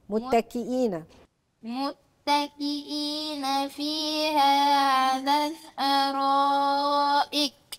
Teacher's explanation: متحرك طب انا هقف على ساكن يبقى انا هسكن الايه الكاف لما اسكن الكاف هيبقى حرف عندي ايه مهموس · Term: الهمس